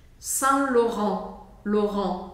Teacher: E o T no final não é pronunciado.